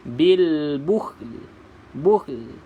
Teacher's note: Kena letakkan lidah pada tempat keluar lam juga. Cuma kita tidak bariskan dia. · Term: sukunkan